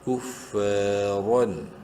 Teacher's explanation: کریں گے الف مدہ کی وجہ سے، را دو زبر رن، را کو منہ بھر کے پڑھنا ہے زبر کی وجہ سے